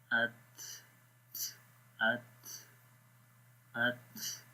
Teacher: So the ta has hums, which is the flowing of air, so the continuation of breath, like we say at, at, at, right?